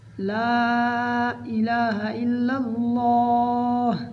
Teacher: اللہ تعالیٰ کے نام کے ساتھ پہلی دفعہ لام کو باریک پڑھیں گے، دوسری بار اللہ والا لام موٹا پڑھا جائے گا